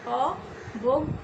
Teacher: গ মানে বর্গীয় জ যোগ ইয় এই ধ্বনিটি থাকার কারণে সেই অয়ের উচ্চারণ ও এর মতো হবে